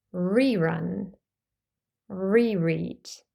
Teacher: the letter R is followed by a vowel sound and so we pronounce it as R in all accents